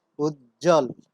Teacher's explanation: যেমন উজ্জ্বল, বর্গীয় জয় জয় যুক্ত আছে, এর সাথে আরো যুক্ত হয়েছে ব, এক্ষেত্রে আমরা ব ধ্বনির কোনো উচ্চারণ দেখতে পাচ্ছি না, শব্দটির উচ্চারণ হচ্ছে উজ্জ্বল।